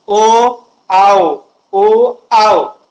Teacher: कंठातून आवाज सूर तर निघतो, पण ओठांचा यांच्यामध्ये सहभाग असतो, त्यामुळे यांना कंठोष्ठ वर्ण असं म्हणतात.